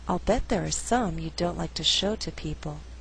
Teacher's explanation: Here I did not stress the verb like, although like is a content word. The flow is a little more natural without stressing all those content words in the second half of the sentence.